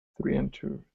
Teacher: So 3 ends in the high front vowel E, okay? And the following word and begins with the vowel a, okay? Therefore, the semi-vowel y is used to link the two words.